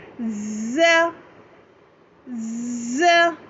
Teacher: ये जो शुरू में आपको ज़ की आवाज़ आ रही है यही सीटी की आवाज़ है, इसको लाज़मी जो है ज़ाहिर करना है, ठीक है।